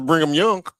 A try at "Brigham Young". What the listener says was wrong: not no N in it. It's Brigham.